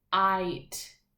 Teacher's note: that that G H makes the I say its name so we're not hearing the sounds of the G and the H because it's working really hard to make sure we hear that long vowel I sound